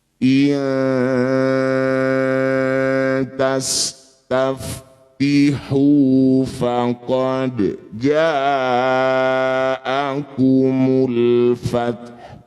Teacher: Disebut bacaan namanya ikhfa aqrab. Bunyi nun dengungkan dua harakat. Saat berdengung lisan kita sudah ada di tempatnya ta. Iya. Ujung lidah sudah nempel di pangkal gigi seri atas. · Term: ikhfa akrob